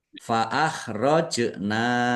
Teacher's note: jim sukun, qalqalah lagi, ya, dibaca memantul, ditampakkan pantulannya.